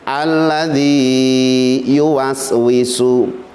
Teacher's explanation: agar supaya panjangnya ya atau wawu yang pertama itu aman tetap dibaca panjang